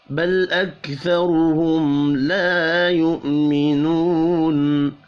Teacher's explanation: بل اکثرهم را کو پر پڑھیں گے پیش کی وجہ سے. میم ساکن کے بعد لام ہے، اظہار شفی ہوگا، غنہ نہیں ہوگا. لا یؤمنون الف اور واو مدہ ایک ایک الف کے برابر کھینچ کر پڑھے جائیں گے.